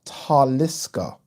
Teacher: taliska is pronounced with the emphasis on the first syllable